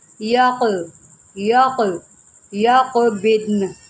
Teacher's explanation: حروف قلقلہ کے اوپر جب یہ جزم ہوتی ہے تو ہم کیا کرتے ہیں، وہاں پر قلقلہ کرتے ہیں، اس کو ہم یک نہیں، اس کو پڑھیں گے یق، قاف کو موٹا بھی کریں گے کیونکہ یہ حروف مستعلیہ میں سے ہے